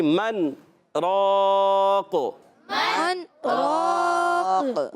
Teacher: را الف زبر را کو پر پڑھیں گے، موٹا پڑھیں گے، اور الف مدہ ہے، ایک الف کھینچنا بھی ہے، قاف کے نیچے زیر آ گئی، دو زیر کی تنوین ہے، دو زیر کی تنوین بھی وقف میں ساکن ہو جاتی ہے، تو وقف کر دیں، قاف حرف قلقلہ میں سے قلقلہ ہو جائے گا، تو آواز آئے گی من راق، من راق، وقیل من راق، وقیل من راق۔